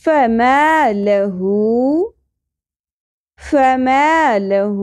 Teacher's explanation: لہ زبر شارٹ رکھنی ہے اور الٹا پیش ایک الف کے برابر